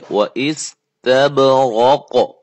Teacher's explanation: قاف کو موٹا کر کے قلقلہ کر کے ادا کریں